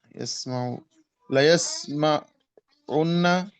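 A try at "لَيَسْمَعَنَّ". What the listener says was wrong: उस उन्ना नहीं नून से पहले जबर जहाँ पेश आता है वहाँ जबर हो जाता है बताया ना अभी हाँ यस्माअन्ना हाँ यस्माउ पेश है तो यस्मा जबर हो जाएगा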